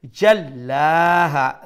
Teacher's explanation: lam has a shadda double letter double sound, then it has a standing fatha, we stretch one alif long